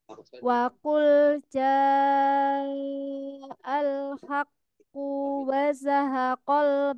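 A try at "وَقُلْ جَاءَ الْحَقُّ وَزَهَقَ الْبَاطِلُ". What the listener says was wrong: Tidak panjang. Tidak panjang.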